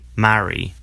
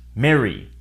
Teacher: in which case the vowel is pronounced as eh in the US. In the UK, marry.